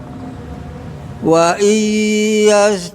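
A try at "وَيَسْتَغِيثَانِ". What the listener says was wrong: Baik, coba Pak sinnya. Yas. Huruf sinnya, huruf sa-nya juga. Ghainnya udah benar.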